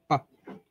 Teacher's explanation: দুই ঠোঁটের মাঝে সাহায্যে উচ্চারিত হয় শব্দ। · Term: বিলাবিয়াল